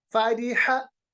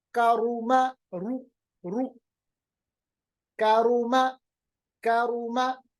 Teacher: ری پڑھتے وقت ہم نے ہونٹوں کو گول نہیں کیا